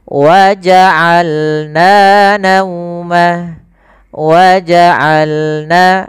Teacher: Dari tengah tenggorokan kita lafalkan ain.